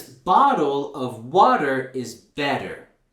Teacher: this is called the flap T and this happens when the t is in between two vowel sounds it's like a soft D sound